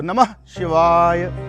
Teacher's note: तो वो नमः जैसे ही कहेंगे तो वो उदात्त उठा हुआ आएगा, पूरे फोर्स से आएगा, और शिकार नीचे, फिर वाह, फिर उठाओ, और यकार सामान्य।